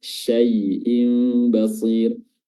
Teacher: Tafasyi artinya tersebar, yaitu tersebarnya udara di permukaan lidah ketika melafazkan huruf shin. Dan makhrajnya adalah ujung tengah lidah diangkat bertemu dengan langit-langit